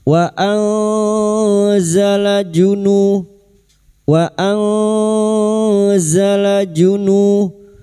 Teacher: Kita urehkan pada kalimat wa nun sukun bertemu zain ikfa hakiki. Kita samarkan bunyi nun sukun dan mendengung selama tiga harakat.